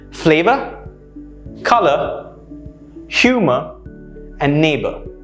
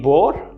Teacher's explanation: use a soft schwa sound instead the er sound